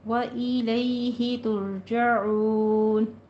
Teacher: تر میں بھی را کو پر پڑھیں گے، را ساکن ما قبل ضمہ ہے، پر پڑھی جائے گی